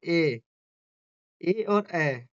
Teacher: ए और अए, यह बोले जाते हैं कंठ से और तालु से